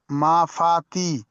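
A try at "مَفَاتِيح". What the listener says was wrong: বানান করার সময় ওটা টান দিতে হবে। এখানে দেখছেন যে এটা ইয়া মাদ্দা আছে, তাহলে এটা মাফাতিটা টান দিয়ে বলতে হবে, তাহলে রিডিং পড়ার সময় টান দেওয়াটা ঠিক হবে। বানান করার সময় যদি এটা টান না দাও তো তাহলে রিডিং এর সময় গন্ডগোল হবে।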